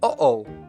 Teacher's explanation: the little catch of air in the throat between and o, in uh-oh. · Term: glottal stop